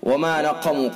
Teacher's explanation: قاف کو پر کر کے پڑھیں گے، حروف مستعلیہ میں سے ہے قاف